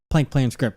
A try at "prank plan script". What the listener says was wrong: You started with plank. Prank plan script. Prank plan script.